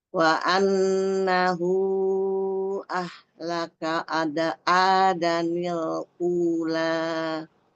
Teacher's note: Itu hu-nya itu wa annahu. Hu-nya itu panjang 4